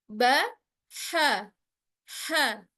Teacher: Ha, dia mudah sebab memang dia datangnya dari tengah tenggorokan. Apabila kita tekan maka khawatirnya dia akan jatuh pada huruf kho ya, ujung tenggorokan. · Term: huruf H